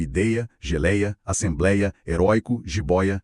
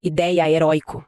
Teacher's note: Em todas essas palavras, a força recai na penúltima sílaba. Ou seja, elas são paroxítonas.